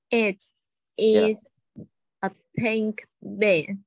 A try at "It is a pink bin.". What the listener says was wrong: Cái từ is là tiếng Việt rồi đấy. Thử đọc lại cái từ is là. Nhà mình sẽ đọc là. It is a pink bin.